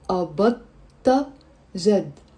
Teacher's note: No, we kind of merge the da and the ta, and we say أبضت جد.